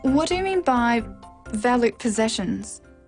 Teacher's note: This is a w question, so it needs a falling tone.